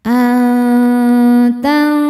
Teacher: Karena nun sukun menghadapi huruf ta. Cara bacanya nun disamarkan ke ta disertai dengung. Dengungnya sedikit karena ta makhrajnya dekat dengan nun. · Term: ikhfa hakiki aqrab